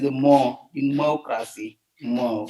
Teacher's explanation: in terms of the word democracy, so then we see that the stress is on the second syllable